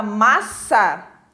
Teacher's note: Na palavra massa, a sílaba tônica é mas